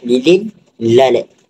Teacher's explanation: Udara akan keluar daripada sisi lidah.